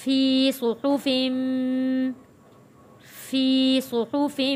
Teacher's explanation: یا ساکن سے پہلے زیر ہے، حروف مدہ ہے، 1 الف کے برابر کھینچ کر پڑھیں گے